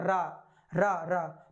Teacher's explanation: कंपित हो या लुंठित हो, इसलिए हम रा को लुंठित व्यंजन कहते हैं। रा का उच्चारण मूर्धा से होता है।